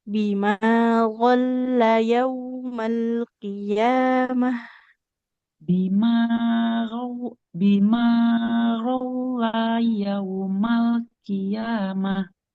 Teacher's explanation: lamnya ditekan seperti double L